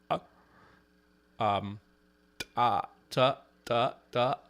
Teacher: constricted glottis, that's a glottalized sound.